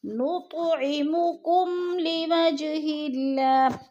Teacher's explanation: لوجہ پہ پھر قلقلہ ہو رہا ہے، جیم کو ہلا کر پڑھنا ہے۔ اللہ، اللہ کو باریک پڑھا جائے گا کیونکہ اللہ سے پہلے لفظ ہا کے نیچے زیر ہے تو اللہ باریک پڑھا جائے گا۔